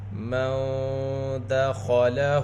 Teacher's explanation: ہا کے اوپر الٹا پیش، ہا کو 2 حرکت کے برابر کھینچ کر پڑھیں گے۔ الٹے پیش کی آواز آگے کو جاتی ہے، ہونٹ گول ہوتے ہیں۔